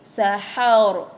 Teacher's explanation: Baca barisnya pun tafkhim, tebal. Matikan ra, tak boleh baca barisnya pun, dia pun tebal juga.